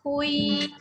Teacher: jangan baca hun, masuk bunyi ya. Hui, senyum.